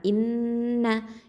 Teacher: இந்த நூனில் வந்து அக்கமல் குன்னா கொடுக்கணும்